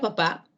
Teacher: en la palabra papá la última sílaba es la que lleva la fuerza de voz la intensidad · la última sílaba, pa, es la que recibe el suprasegmento acento